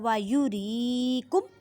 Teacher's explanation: را کو باریک پڑھیں کیونکہ را کے نیچے زیر ہے، یا ساکن سے پہلے زیر ہے تو یا مدہ کا قاعدہ کریں، مینس کہ ایک الف کی مقدار میں کھینچ کر پڑھیں۔